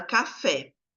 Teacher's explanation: no caso de café, a sílaba tônica é o fé, que até tem um acento